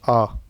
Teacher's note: केवल आ जो बोलने में अधिक मुंह खुलता है। इसलिए विवृत है। · जैसे हम आ का उच्चारण करें आ, हमारा अधिक से अधिक मुख खुला है, इनसे ज़्यादा किसी भी यदि हम स्वर को बोलें तो नहीं खुलता, इसलिए ये विपरीत में अकेला आता है। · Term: विवृत स्वर, विवरित स्वर